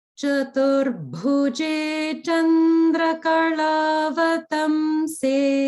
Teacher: notice here in this line, bhu in Chaturbhuje, that bhu is Mahaprana.